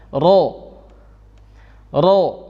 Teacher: di dalam keadaan fathah dibaca tebal